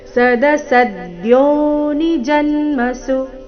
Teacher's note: ಸದಸದ್ಯೋ ಸದ್ಯೋ ಸ ಮೇಲೆ ಆಘಾತ ಸದಸದ್ಯೋನಿ ಜನ್ಮಸು ಜನ್ಮಸು ಕೊನೆಗೆ ಸು ರಸ್ವ ಸದಸದ್ಯೋನಿ ಜನ್ಮಸು ನೋಡೋಣ ಪೂರ್ತಿ ಶ್ಲೋಕ